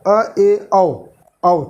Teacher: जब इनको बोलते हैं तो हम लोगों का मुख जो है हाफ ओपन होता है